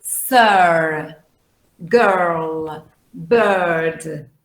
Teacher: So this is the long schwa. Okay, it's a mid vowel